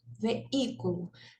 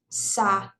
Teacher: Então, é um hiato e o I é tônico.